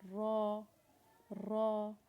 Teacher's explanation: را کی آواز کو آپ نے تھوڑا سا موٹا کر کے نکالنا ہے، را، را۔ اپنی زبان کے اگلے حصے کو منہ کے اوپر کی طرف لگائیں اور موٹا کر کے را کی آواز نکالیں، جیسے را، را۔